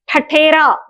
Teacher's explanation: ठठेरा बोलते समय जिह्वा राउंड होकर पीछे की ओर चली जाती है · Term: मूर्धन्य